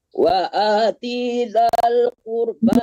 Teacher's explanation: i-nya tidak panjang, jangan tertahan di huruf yang tidak panjang